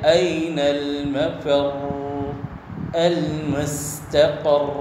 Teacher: صفت تقریر را میں ایک محدود انداز میں ہوگی، مبالغہ نہ کیا جائے کہ جو ہے لا يحدث مثلہ، کہ اس کے جو ہے مثل اور کوئی را پیدا نہ ہو جائے، اس کا خیال رکھا جائے۔